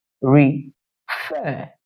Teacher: you see that the stress lies on the last syllable meaning the force your voice went a little bit higher than when you were pronouncing the first syllable